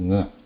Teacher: They also need the air has to pass through nasika also here. When we say nga, the air comes out of kantha and then it passes through nose